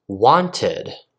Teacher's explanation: ID pronunciation when you add e d like I said wanted since it ends with a T sound we have the ID sound as well